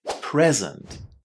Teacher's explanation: If you use it as a noun meaning a gift, you need to put the stress on the first syllable and say present.